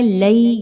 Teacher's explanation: یا پر جزم کا نشان ہے اور اس سے پہلے والے حرف لام پر زبر آ رہا ہے جو کہ یا لین کی نشاندہی کر رہا ہے، یہاں پر اس کو 2 حرکات کے برابر لمبا کر کے پڑھا جائے گا